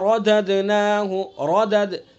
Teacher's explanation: रा को पुर पढ़ेंगे चूँकि रा के ऊपर ज़बर है। रददनाहु दाल के अंदर कलकला करेंगे।